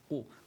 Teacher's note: we start with a qaf with a dhamma in it, qu, which means that the lips are going to go forward, concentrating on the edges here.